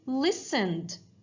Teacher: the verb listen, it ends in the voiced sound n. And because it's voiced sound, we are going to circle the d sound.